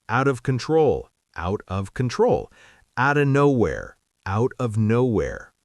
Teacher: And I think the key is to stop thinking of them as two separate words. In fast speech, out of becomes one smooth sound, outta. It's not out, then of, it's one blended word.